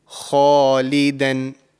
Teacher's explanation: The kha is a thick sounding letter, and it's a letter of the throat. So it's coming from the throat.